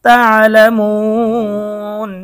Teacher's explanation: মদের হরফের পরে ওয়াকফ করলে মধ্যে আরজি 3 আলিফ টেনে পড়তে হয়।